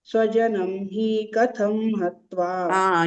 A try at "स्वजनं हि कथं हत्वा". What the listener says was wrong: You are saying dirgha there. Swajanam hi katham hatva. Swajanam hi, you are saying. Dirgha you are saying.